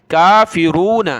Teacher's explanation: ہا کو لام کے ساتھ ملایا، ہا لام زبر حل، قل یا ایھا الکافرون۔ کاف کے اوپر کھڑا زبر ہے، کاف کھڑا زبر کا، ایک الف کی مقدار، اس کو کھینچا، فا زیر فی، را واو پہ شروع، موٹا کیا، نون زبر نہ، کافرون۔